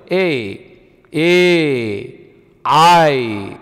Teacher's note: ಬೇರೆ ಬೇರೆ ಸ್ಥಳದಲ್ಲಿ ಹುಟ್ಟುತ್ತವೆ ಉದಾಹರಣೆಗೆ ನೋಡಿ ಕಂಠ ತಾಲವ್ಯ ಅಕ್ಷರಗಳು ಅಂತ ಕರೀತೀವಿ ಕಂಠ ಮತ್ತೆ ತಾಲು ಎರಡರ ಮಧ್ಯೆ ಹುಟ್ಟುತ್ತೆ ಉದಾಹರಣೆಗೆ ಎ ಅನ್ನೋದು ನೋಡಿ ಎ ಗಾಳಿಯನ್ನ ಕಂಠದಿಂದ ತಗೊಂಡು ತಾಲಿಗೆ ತಟ್ಟಬೇಕು ಅವಾಗ